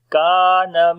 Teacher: Kaf we did in light sound and also we long due to alif